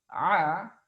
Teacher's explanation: huruf Ain ini termasuk dari huruf yang keluar dari tengah-tengah tenggorokan